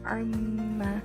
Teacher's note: Di contoh yang kedua ada lafaz amma, maka harus dibaca dengan lafaz amma, harus disertai dengan dengung ya, tidak boleh dibaca dengan arma. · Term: gunnah musyaddadah